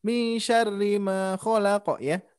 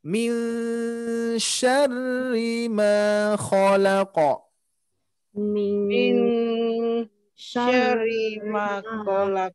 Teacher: Di sini ada nun mati bertemu shin, Bapak Ibu sekalian. Ini menandakan harus kita dengungkan karena shin itu termasuk huruf ikhfa.